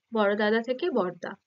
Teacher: একই ধ্বনি বা সমধ্বনি পাশাপাশি বসছে, তার ফলে কি হয় না, এই দুটোর মধ্যে একটা লোপ পায়। তার ফলে কি হচ্ছে দেখো, বড় দাদা থেকে বড়দা, বড়দাদা থেকে পরিবর্তন হয়ে হচ্ছে বড়দা, একটা লুপ্ত হচ্ছে, তাই তো? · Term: সমাক্ষর লোপ